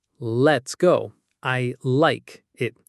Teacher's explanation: That's the light L. You'll find it before a vowel sound.